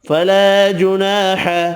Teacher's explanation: الف مدہ دو ہیں، دونوں ایک ایک الف کی مقدار میں کھینچ کر پڑھیں گے